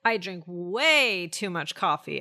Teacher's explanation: we should be emphasizing the word way.